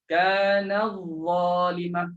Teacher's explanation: Tak perlu pergi ta, tapi terus fokus kepada huruf dha. Terus masuk dha.